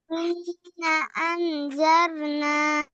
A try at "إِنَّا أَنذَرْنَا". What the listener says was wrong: ইন্না টান হবে না, এখানে টান দিচ্ছ না কেন? জবরের বামে কি আছে? খালি আলিফ, মাদের হরফ। মাদের হরফ টানলে 1 আলিফ টান দিয়ে পড়তে হবে, ঠিক আছে?